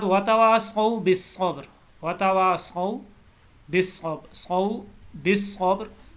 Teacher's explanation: صبر کے اوپر را جو ہے یہ پر پڑھا جائے گا، موٹا پڑھا جائے گا